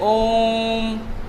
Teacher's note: और ऐसा कब होता है, जब या तो हम किसी मंत्र का उच्चारण करते हैं तब, जैसे ओम, ये क्या है, मंत्र का उच्चारण है, और इसमें ये जो मूल स्वर थे या ये सभी जो स्वर हैं इनकी अपेक्षा क्या लिया गया है, समय बहुत अधिक लिया गया है, या 3 मात्रा का समय इसको हम बोल सकते हैं। तो ऐसे स्वर को जब किसी भी इन्हीं में से किसी स्वर के उच्चारण में जब हम 3 मात्रा का समय ले लेते हैं तो उसको हम क्या बोलते हैं, त्रिमात्रिक बोलते हैं। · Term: प्लुत स्वर